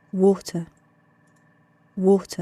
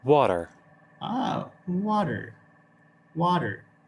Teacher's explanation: Now, the British people do not pronounce their R. They just drop it off.